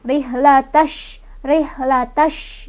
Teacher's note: shinnya juga punya sifat tafashi, artinya ada angin menyebar ya.